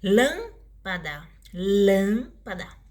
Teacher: E a palavra com a antepenúltima sílaba mais forte chama-se proparoxítona